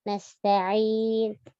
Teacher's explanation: Na'budu, budu tipiskan, sama nasta'in, semua tipiskan. Jadi lidahnya jangan tegang. Lidahnya terasa ringan. Nasta'in, kayak kita nggak pakai lidah gitu.